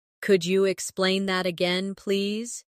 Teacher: Could you sounds like could ya, naturally.